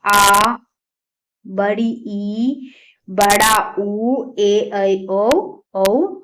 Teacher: दीर्घ स्वर जो है जिनके उच्चारण में ह्रस्व स्वर से अधिक समय लगता है